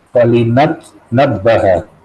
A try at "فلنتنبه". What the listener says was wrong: Nah, bukan tanabbaha ya, itu ada nunnya. Afwan, bukan intabah. Falnatanabbaha. Falnatanabbah.